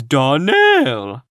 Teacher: the correct pronunciation of our name is darnell accent on the last syllable